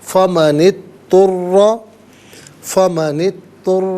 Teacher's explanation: فا من، اضطر، من میں نون کے نیچے زیر ہوگا، اس سے اضطر کے دوت ساکن کے ساتھ ملائیں گے، درمیان میں سے الف یعنی حمزہ کو حذف کیا جائے گا، اور اضطر میں آپ دیکھیں را مشدد ہے، جماؤں کے ساتھ پڑھیں گے، زبر ہے، پر کر کے پڑھا جائے گا۔ را پر زبر یا پیش ہو تو پر پڑھتے ہیں، زیر ہو تو باریک کر کے پڑھا جاتا ہے، تو یہاں پر کر کے پڑھیں گے۔